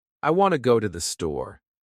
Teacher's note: The words want, go, and store are strong. The others are weak.